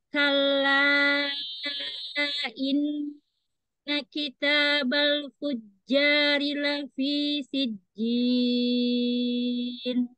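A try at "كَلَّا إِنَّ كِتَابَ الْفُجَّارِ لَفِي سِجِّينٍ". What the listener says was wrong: Nadanya jangan direndahin di ujung. Jadi nggak boleh turun ya Ustazah, harus datar.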